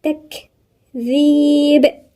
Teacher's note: الكاف هنا في همس يعني جريان نفس